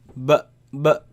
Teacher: So you see the letter, this letter, the sound is b, comes from the lips